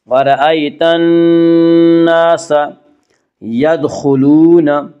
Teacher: دال میں قلقلہ ہوگا، دال حروف قلقلہ میں سے ہے